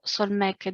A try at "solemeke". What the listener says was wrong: Solemeke. It's second conjugation. And in the second conjugation, we need to have the vowel both in the participle and then now in the converb.